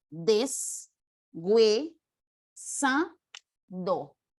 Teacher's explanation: una semiconsonante cuando esa H entra en contacto con un diptongo esa H de lo que era muda adquiere cierta sonoridad Y en vez de sonar a H muda ahora suena a